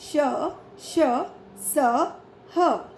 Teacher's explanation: इन व्यंजनों के उच्चारण के समय वायु मुख से रगड़ खाकर ऊष्मा पैदा करती है, यानी उच्चारण के समय मुख से गर्म हवा निकलती है। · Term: ऊष्म व्यंजन